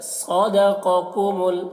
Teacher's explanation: सौद को पूर्व पढ़ना है, क़ाफ को पूर्व पढ़ना है, दोनों हुरूफ़ मुस्तालिया में से हैं।